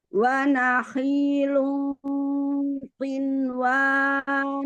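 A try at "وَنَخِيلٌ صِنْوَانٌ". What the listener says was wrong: Si-nya kurang apa namanya? sofir. Nah, itu dia, kurang sofir. Jadi ancang-ancangnya itu hilang tertelan di dalam. Hilang tertelan di dalam. Jadi dia harus shot itu kan di depan ya. Shot ini di depan seperti si.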